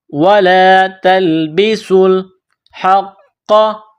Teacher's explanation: سین میں سیٹی کی آواز پیدا کرنی ہے ، سین کو لام کے ساتھ پلس کرنا ہے۔ یہ جو